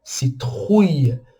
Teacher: E a abóbora em francês, aquela abóbora de Halloween, fala citrouille, trouille, citrouille. Então o R muito forte, tá? Vem da garganta. Então, ruja, citrouille.